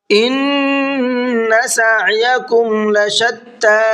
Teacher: ان نون میں غنہ کریں گے اس لیے کہ نون کے اوپر تشدید ہے۔ سعیکم، یہ سایکم نہیں ہے، اکثر لوگ اس کو سایکم پڑھتے ہیں تو سایہ نہیں ہے بلکہ سعیکم۔